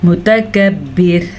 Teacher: جب را وقف کی حالت میں ساکن ہو جائے گی تو پیچھے زیر کی وجہ سے یہ را باریک پڑھی جائے گی